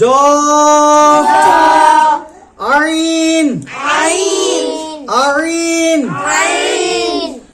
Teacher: কণ্ঠনালীর মধ্যখান হইতে উচ্চারিত হবে আইন